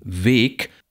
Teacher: wenn nun aber dieses g an das Ende einer Silbe Gerät wie in weg dann wird es stimmlos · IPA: [ve:k]